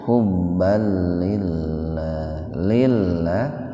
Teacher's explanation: fathatain ketemu dengan lam itu idgham bila guna, dimasukkan ke lam, membacanya itu tanpa mendengung. Hubbal lillah tarki, asalnya li Allah gitu.